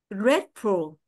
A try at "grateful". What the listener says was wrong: Grateful. À, không có còn phải nhấn lên quá cao đâu ha. Grateful.